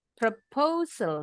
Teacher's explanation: Nah, ada penekanannya. Di suku kata kedua. Bunyinya lebih tinggi intonasinya.